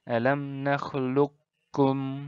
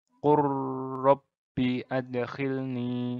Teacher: dengan mengabaikan huruf pertama dan membaca huruf kedua langsung secara bertasydid. Jadi huruf pertama, jika ada ko bertemu ka ini, nanti ko-nya jadi hilang, masuk ke kaf langsung, ditasydidkan seperti itu. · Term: idgham mutaqarribain